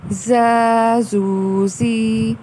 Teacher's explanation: اب یہاں دیکھیے زا اور ذال میں فرق. ذال کو ہم نرمی سے ادا کر رہے ہیں مگر زا میں سیٹی کی آواز ہے اور اس کو دبا کے، اور کیونکہ حروف صفریہ ہیں جن میں سیٹی کی آواز آتی ہے اس وجہ سے اس کو بھی زا ادا کیا جائے گا، سختی سے ادا کیا جائے گا.